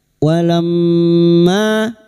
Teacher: mim yang bertasdid guna musyadadah kita dengungkan selama tiga harakat